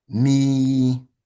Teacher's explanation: this next one is the Kesra associated with a Ya, which it comes in a double elongated sound, right? A double elongated sound, making the sound E, or 2 counts, E. So double the length of E.